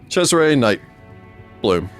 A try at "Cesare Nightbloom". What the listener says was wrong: Nightbloom, yeah. There's not a pause there.